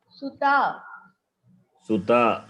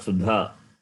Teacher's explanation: It is ta is first letter of Tavarga. It is dental. It is hard consonant. It is alpa pranas.